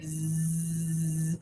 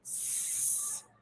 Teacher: So that means that the Z sound is voiced and the S sound is voiceless because there's no vibration of the vocal cords.